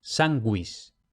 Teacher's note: en esas secuencias la U se lee, como en español cuando tiene diéresis, gue, gui, como en sanguis.